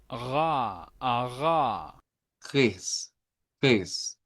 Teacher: nos vamos a pasar a la R, que en este caso es la R uvular.